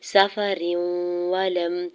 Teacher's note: را کے نیچے دو زیر کی تنوین کو واو مشدد کے ساتھ ملاتے ہوئے ادغام مع غنہ کا رول اپلائی ہو رہا ہے. وَلَمْ تَجِدُوا واو ساکن سے پہلے دال کے اوپر پیش واو مدہ ہو رہا ہے.